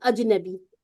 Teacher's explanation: آپ جب اج کہتے ہیں نا، تو بالکل آپ کی سانس بند ہو جاتی ہے